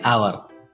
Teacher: As H is silent here, hour starts with a vowel sound.